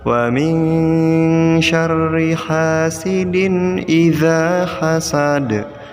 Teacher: Pada ayat kelima kita juga menemukan dua hukum bacaan yaitu ikhfa yang diberi warna merah dan qalqalah yang diberi warna hijau. Jadi jika ikhfa nunnya dibaca samar ya, dan jika qalqalah da-nya dipantulkan.